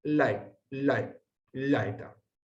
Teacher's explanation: Se acerca este diptongo a la pronunciación del inglés bye bye, para los que sepan inglés. O sea que no es una I, pero está entre una I y una E